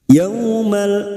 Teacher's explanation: fathah bertemu wau sukun Huruf layin kita lunakkan